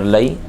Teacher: یا لین ہو رہا ہے بغیر کھینچے بغیر جھٹکا دیے نرمی سے